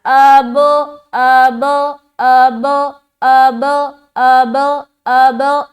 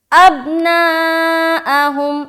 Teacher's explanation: جو جزم والا حرف ہے وہ 2 مرتبہ میں ادا کر رہی ہوں یا ہم سب ادا کر رہے ہیں، جسے کہا جاتا ہے قلقلہ کرنا۔